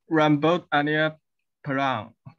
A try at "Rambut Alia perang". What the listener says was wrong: Not Perang, okay. Perang and perang. If you read with E perfect, okay, rambut Alia perang, the meaning is brown hair. If you read perang with E taling, perang, the sound is perang, the meaning is wars. War, you know, war between the both of people, war.